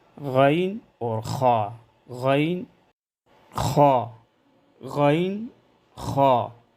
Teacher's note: غین اور خا کی ادائیگی میں صفت استعلاء کی وجہ سے زبان کی جڑ تالو کی طرف بلند ہو تاکہ دونوں حروف موٹے ادا ہو۔